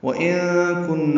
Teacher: وَإِن كُنَّ نون ساکن کے بعد کاف آنے کی وجہ سے اخفا ہے. وَإِن كُنَّ نون مشدد پہ غنہ ہے.